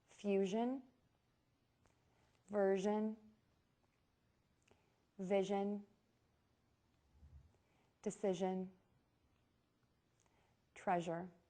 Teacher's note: the zh is the same as the sh but with voicing to make this consonant sound your lips are rounded and your tongue tip is behind the top front teeth and the middle is arched towards the roof of the mouth